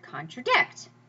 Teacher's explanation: anapestic, and that's the name of the meter that goes down, down, up, as in the word contradict.